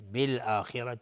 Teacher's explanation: خا از حروف استعلاء غلیظ تلفظ میشه و را هم حکمش استعلاء چون فتحه داره